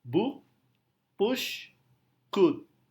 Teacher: pendek adalah vowel tipe near close back rounded vowel jadi karena pengucapannya pendek bibirnya mengerucut dan hampir menutup jadi Luba yang tersisa pada bibir itu lebih kecil daripada u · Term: u pendek, U pendek